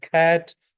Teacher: Back of the tongue जो टंग का back part है touches the soft part of the mouth roof जिसको हम वेलम यानी तालू कहते हैं। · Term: वेलर